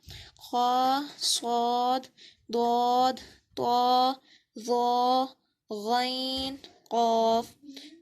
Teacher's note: ان 29 حروف میں 7 حروف ایسے ہیں جو ہر حالت میں پر یعنی موٹے پڑھے جاتے ہیں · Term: حروف مستعلیہ